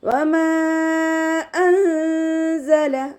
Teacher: ഇവിടെ നൂൻ സാക്കിനയ്ക്ക് ശേഷം ഇഖ്ഫാൻ്റെ ലെറ്റർ ആയിട്ടുള്ള സായ് വന്നിട്ടുണ്ട്. നൂൻ സാക്കിനയെ മറച്ചു വെച്ചിട്ട് മണിച്ചോതി കൊടുക്കുക. നൂനിൻ്റെ സൗണ്ടിനെ ഇവിടെ വ്യക്തമായിട്ട് കേൾപ്പിക്കരുത്. ഒന്ന് ഹൈഡും ചെയ്യുക, അതോടൊപ്പം തന്നെ മണിക്കുകയും ചെയ്യുക കേട്ടോ.